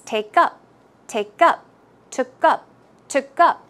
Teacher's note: the stress should go on the second syllable.